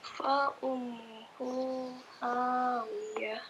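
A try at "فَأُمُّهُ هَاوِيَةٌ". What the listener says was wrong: Mimnya ditahan lagi. Fa ummuhu hawiyah.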